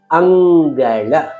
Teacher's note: ಅನುಸ್ವಾರವನ್ನ ಗಮನಿಸಿ ಅಂ ಆದರೆ ಶಬ್ದದಲ್ಲಿ ಅಂಗಳ ಅಂಗಳ ಎಂದು ಓದುವುದಿಲ್ಲ ಅಂಗಳ ಏಕೆಂದರೆ ಮುಂದಿನ ಅಕ್ಷರದ ಪ್ರಭಾವ ಈ ಅನುಸ್ವಾರಕ್ಕೆ ಬರುವುದರಿಂದ ಅದನ್ನ ನಾವು ಅಂಗಳ ಎಂದು ಉಚ್ಚರಿಸುತ್ತೇವೆ